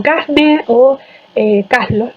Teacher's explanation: esporádicamente pues se produce la aspiración ante NL